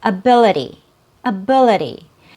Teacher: Here we have two syllables with a schwa sound. The first syllable and the third syllable. The second syllable has a real vowel sound. That's our stressed syllable. It has a short i sound.